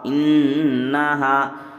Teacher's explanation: نون پر یہاں پر تشدید ہے تو غنہ ہوگا